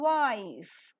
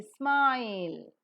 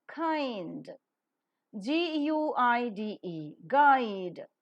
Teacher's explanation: the lips are neutral at first and later are Loosely spread while the Glide is pronounced